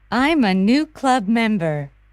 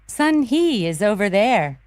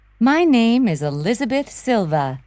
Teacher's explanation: Notice how final consonant sounds are often linked to the vowels that follow them. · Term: linked sounds